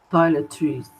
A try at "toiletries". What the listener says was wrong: É aquele R maldito. Toiletries.